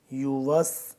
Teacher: سین کو سختی سے سیٹی کی آواز نکلنی چاہیے